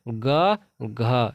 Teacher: ग घ, ये कंठ से बोलते हैं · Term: कंठ्य ध्वनि